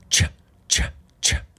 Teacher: So this is an unvoiced plosive. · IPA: /tʃ/